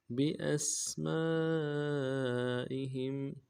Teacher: انبئهم بأسمائهم بأسمائهم با کو نرم سے ادا کرنا ہے، حمزہ کو سین کے ساتھ ادا کرنا ہے، سیٹی والا حرف باریک ہوگی، سیٹی آواز جاری رہے گی سین میں